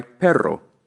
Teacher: the Double R sounds like the r the beginning of a word its sound is more vibrated